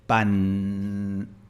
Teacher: la palabra pan, en un acento neutro se pronuncia con la punta de la lengua en el frente